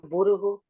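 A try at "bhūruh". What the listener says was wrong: burug. Burug. Why you make it a long one to short? Burug.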